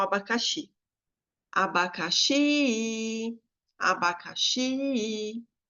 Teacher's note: qual que foi a sílaba mais longa a mais tônica mais intensa o xi né